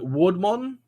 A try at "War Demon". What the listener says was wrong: Oh, is it War Demon? Fuck! I kept saying like the war like Warden.